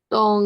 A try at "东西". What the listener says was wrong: Ini harusnya dia nggak ada itunya ya, nggak ada nadanya, boleh dihapus ya. Tungsi. Jadi bacanya tungsi, netral